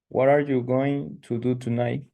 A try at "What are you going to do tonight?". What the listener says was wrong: Don't forget that it is a question, you do an emphasis at the end. What are you going to do tonight? Like you're asking, okay?